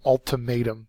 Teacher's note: it's a noun third syllable is accented